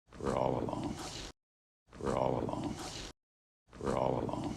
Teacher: stress on the word all but the whole thing is really low in Pitch low in energy we're all alone we're all alone we're all